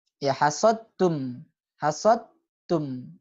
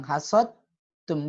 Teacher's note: Dal dengan ta sama makhrajnya. Ya tapi langsung masuk ke ta.